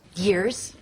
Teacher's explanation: 둘 다 둘 다 모음으로 처리해 온 거예요. ear가 아니라 y가 들어가 줘야 돼요. 자음이 들어가 줘야 돼. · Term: Y 사운드